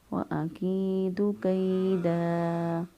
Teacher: پہلے والا حرف پر زبر ہو تو یا لین ہوتا ہے، ایک الف کے برابر یہاں پر لمبا کر سکتے ہیں کیونکہ یہ وقف سے پہلے موجود ہے